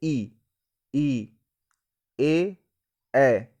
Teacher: जीभ का जो सामने हिस्सा है वो क्या है, उठ रहा है। ठीक है, सामने साइड का प्रयोग हो रहा है, तो वही क्या है, अग्रस्वर कहलाता है।